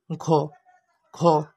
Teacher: যেমন গ অল্প বাতাস ঘ একটু বেশি বাতাস প্রবাহ হচ্ছে। এভাবে আমরা চিনতে পারব।